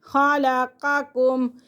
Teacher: پہلا قاف موٹا اور اگلا کاف باریک